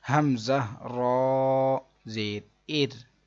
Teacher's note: اس را ساکن سے پہلے زیر ہے، اس کو باریک پڑھیں گے